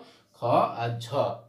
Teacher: 2, 4, চতুর্থ, পঞ্চম, এটা হচ্ছে মহাপ্রাণ। অর্থাৎ উচ্চারণের সময় কি হয়? বাতাসের চাপটা বেশি থাকে